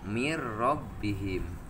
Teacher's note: jadi ro na diambil karena nun digunahkeun dimasukkeun jadi mir rabbihim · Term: idgom bila gunnah